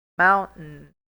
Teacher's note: Porque o T e o restante vai ser um pouco nulo.